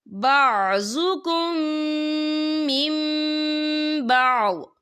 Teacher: ہم پچھلے میم کو اگلے میم کے ساتھ ملا کر پڑھیں گے اور ہم یہاں غنہ بھی کریں گے